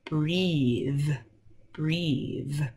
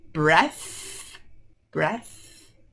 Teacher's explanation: this is a voiced th breathe but if you see this word breath that's unvoiced